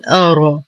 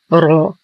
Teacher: نرقق الهمزة، هي حرف شديد مجهور مرقق، ونخلصه من تفخيم الراء، فلا نقول أرى، والصواب أرى.